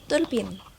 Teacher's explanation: Contoh terakhir adalah pelesapan vokal E di akhir kata.